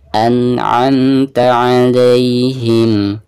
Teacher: Jadi pertama hamzah an'amta, dan yang ini ain ya. Suara ain itu keluarnya dari tengah tenggorokan.